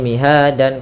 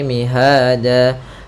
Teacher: Awalnya miha dan berubah menjadi mihada disebabkan karena dia waqaf. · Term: mad iwad